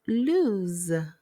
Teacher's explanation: when you pronounce lose, you use the long O sound and end it with Z.